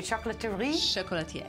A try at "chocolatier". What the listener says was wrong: Chocolatier. Not even pronouncing the R at the end. No.